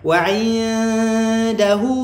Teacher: Wa'indahu nun kosong jumpa dengan da. Okey, nun kosong jumpa dengan da ikhfa hakiki senyum senyumkan.